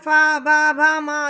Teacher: ओष्ठ है, क्योंकि इनमें होठों को छूकर ध्वनि बाहर आती है। ठीक है, पा वर्ग के जितने वर्ण हैं पा पा वा वा मा सब होठों को छूते हुए बाहर निकलते हैं, इसलिए इसको ओष्ठ्य वर्ण कहा गया।